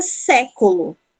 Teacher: a primeira sílaba que é a tônica, sé, mas ela recebe o acento gráfico. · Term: sílaba tônica